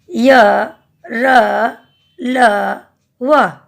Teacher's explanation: असस्त व्यंजन जिन वर्णों का उच्चारण स्वरों और व्यंजनों के माध्यम का होता है, वे असस्त व्यंजन कहलाते हैं। इनका उच्चारण करते समय जीभ मुंह के किसी भाग को भी पूरी तरह स्पर्श नहीं करता